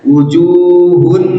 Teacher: itu sempurna tapi ini enggak boleh sempurna harus naqis harus kurang jadi suara nunnya masih ada nah itu yang sering yaitu suara dengung masuk hidung